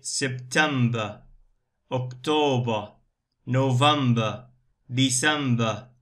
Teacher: in British accent, ER is schwa here. We say September, October, November, December.